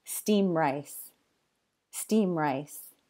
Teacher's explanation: when ED comes between the two consonants here, M and R, it just disappears. So instead of steamed rice, you'll often just hear steam rice.